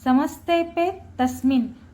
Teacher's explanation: न हलंत आहे उच्चार दीर्घ करायचा नाही